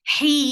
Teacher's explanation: Nasali, for kasra, give e sound. Heen, you gave a temporary sukoon on noon, then it changed the two counts long vowel into 4 counts long. This is called mad arid lissakoon.